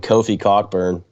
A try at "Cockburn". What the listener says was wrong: Coburn. Yeah, it's not Cockburn. It's Coburn. It's absolutely spelled Cockburn.